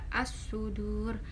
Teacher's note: As-sudu itu termasuk idgham syamsiah karena di sini ada alif lam bertemu huruf idgham syamsiah yaitu shad, kemudian dibacanya memasukkan.